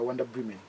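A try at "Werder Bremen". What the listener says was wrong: Yeah, Vierda Bremen. Ani katifera W tuji pronouncing a V. V ne tuji pronouncing a W. Yeah, Vyada. V.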